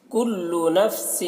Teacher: سن کی تنوین میں اخفا ہو رہا ہے، اس کی آواز کو ناک میں لے جا کر ایک الف کی مقدار کھینچ کر پڑھیں گے